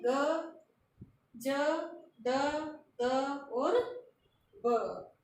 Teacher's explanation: वे जो घोष भी हैं, स्पर्शी भी हैं, अल्प प्राण भी हैं